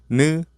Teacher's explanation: the tip of the tongue touches the upper gums